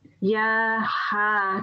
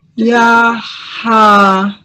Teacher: So this ha sound is really coming from your throat.